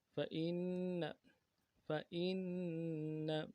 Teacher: نون ساکن میں غنہ کریں گے. نون کے اوپر تشدید ہے، زور دیں گے.